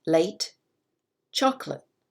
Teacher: The emphasis, the stress is on chocolate, the first syllable.